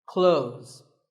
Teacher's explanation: Well, first of all, this word is not cloths. When we say clothes, the TH in the middle can often be silent.